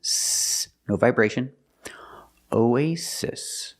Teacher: both s's are pronounced like true s's S no vibration